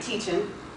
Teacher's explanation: For the words ending in ing, of course he drops the G